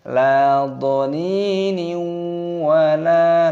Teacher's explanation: kasroh tanwin bertemu dengan huruf wawu, hukumnya dibaca idgham bi gunnah. Cara membacanya yaitu dengan cara dimasukkan dan disertai berdengung. La dhanini wala, lam alif dibaca panjang.